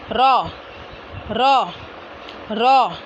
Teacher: ज़बान का किनारा और पुष्ट ऊपर के सामने वाले चार दांतों के मसूड़ों से अदा होगा